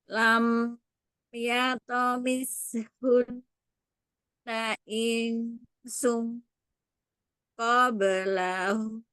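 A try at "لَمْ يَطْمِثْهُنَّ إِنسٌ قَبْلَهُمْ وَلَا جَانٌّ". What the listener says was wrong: Sekali lagi yang terputus-putus di sini.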